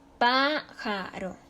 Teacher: Su sílaba tónica está en la antepenúltima sílaba. Se acentúa porque es esdrújula.